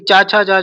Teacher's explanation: ये जो है तालु से बोले जाते हैं, इसलिए इन वर्ग को तालव्य भी कहते हैं।